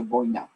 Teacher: El acento debe caer en la O, no en la I. Un diptongo, no es un hiato.